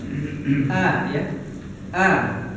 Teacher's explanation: makhraj Hamzah di taawuz ini makhrajnya di mana Pak di Pangkal tenggorokan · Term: huruf hamzah